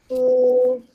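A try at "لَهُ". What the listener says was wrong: Jangan panjang eh. Satu harakat sahaja.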